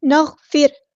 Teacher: نغفر لکم نہیں پڑھنا، غین کو ہم نے ہلانا نہیں ہے، غین ہمارا ہیوی لیٹر ہے لیکن ہم اس کو ہلائیں گے نہیں · لیکن ہم اس کو ہلائیں گے نہیں، نغفر ایسے نہیں، نغفر، را ہم نے یہاں پہ باریک پڑھنا ہے